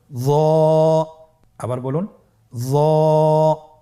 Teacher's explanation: একটু মোটা করে বলতে হবে। হরফটি হলো মোটা হরফ, বারিক করে পড়া যাবে না এবং হরফটি উচ্চারণ করার সময় অবশ্যই 1 আলিফ টেনে পড়তে হবে।